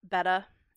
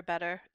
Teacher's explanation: Word finally, the ER suffix, that R is going to get dropped on a lot of words. Beta for better is a really common one.